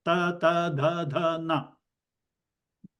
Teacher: the tongue has to touch the back of the teeth